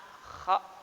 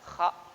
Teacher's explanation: kha termasuk huruf halki, huruf yang keluar dari tenggorokan